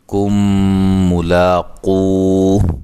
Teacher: یہاں میم ساکن کا ادغام ہے، میم ساکن کے بعد میم